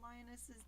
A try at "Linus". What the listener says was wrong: Linus. You added an O. You said Linus.